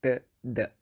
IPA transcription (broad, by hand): t d